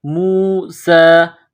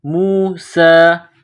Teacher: سین کے اوپر کڑا زبر ہے، ایک الف کے برابر اس کو کھینچنا ہے